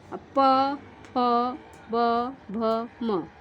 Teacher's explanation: ये हमारे दोनों जो ओठ हैं एक दूसरे को टच करते हैं ना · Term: ओष्ठ